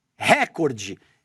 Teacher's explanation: Jornalistas da emissora estariam pronunciando a palavra de forma errada, dando ênfase na primeira sílaba